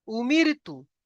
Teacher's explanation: র সাকিনের ডান দিকে জের এসছে, তাই র কে বারিক করে পড়তে হবে